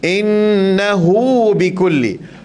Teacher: Mad silah ni kalau kata baris depan ada waw kecil, kita kena baca dia 2 harakat.